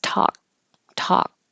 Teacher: you don't hear the K we don't even make the k sound it's talk talk so the tongue goes to the K position · Usually the rule is the T will stay a T if a voiceless sound is before it and k is voiceless, but you don't hear the K. We don't even make the K sound.